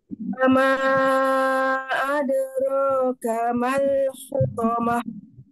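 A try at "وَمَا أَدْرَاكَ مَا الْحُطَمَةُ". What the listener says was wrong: Adroka, ro-nya tebal. Adroka. Wama tipis lagi. Mal hutamah. Hu, coba. Hu. Al-hutamah. Hu. Tipis ya. Mal-hutamah. To-nya yang tebal. Mal-hutamah.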